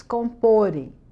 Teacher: Para eles comporem, a sílaba tônica é no pô.